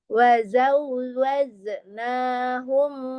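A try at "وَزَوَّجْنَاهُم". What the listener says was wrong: Bedakan antara huruf zai dengan jim ya, yang qalqalah jim. Wa zawwajnahum wajna. Jangan ketebalan jim ya, tidak wajen. Wajna.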